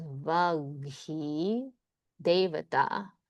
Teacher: And then you add voicing and it becomes ga. And then this ka becomes its voiced version, ga.